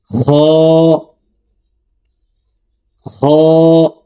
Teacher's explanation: আর খ হরফের উচ্চারণ হলকের শেষ থেকে পড়তে হবে।